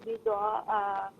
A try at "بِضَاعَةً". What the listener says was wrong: اچھا ایک تو یہ کہ بضاعہ آخر میں ہا کی آواز ہوگی اور واللہ نہیں واللہ.